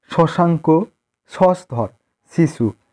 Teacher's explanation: জিহ্বার অগ্রভাগ তালুর আগে স্পর্শ করে উচ্চারিত হয়